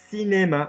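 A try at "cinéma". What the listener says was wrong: No, you're going cinema. You're all down here again,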